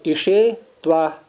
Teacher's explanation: ईश मूर्धन्य शकारांत शब्द है ये